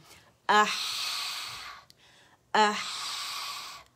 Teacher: ہا میں بھی آواز چلتی ہے جب یہ سکون کے ساتھ ہوتے ہیں اور صفت لازمہ واضح ہوتی ہے، اور اس میں ہمس ہے، آواز رخاوا ہے، آواز چلے گی